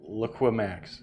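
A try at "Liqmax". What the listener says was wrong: No, there's no I. Lickmax.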